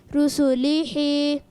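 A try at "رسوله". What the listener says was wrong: ہی کی آواز نہیں، ہا نہیں، ہا، رسولی ہی،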